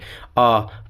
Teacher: आपका मुंह खुलेगा और अंदर से क्या है? आवाज आएगी पीछे वाले भाग से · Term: पश्च स्वर